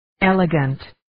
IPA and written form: 'eləgəntliː (Elegantly)